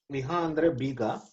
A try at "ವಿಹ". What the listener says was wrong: Correct. Yes.